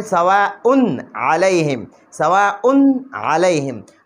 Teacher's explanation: نو اوس په دلته کې مونږ سواء نه وایو، بلکې مونږ وایو سواء علیهم، سواء علیهم. دلته به مونږ اظهار کوو په تنوین کې، ځکه د تنوین نه پس حروف حلقیونه عین راغلی دی